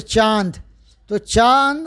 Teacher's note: इनका उच्चारण नाक और गले दोनों से होता है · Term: अनुनासिक